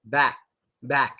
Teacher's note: My back is like half of that C sound. Your throat just closes, it stops the word.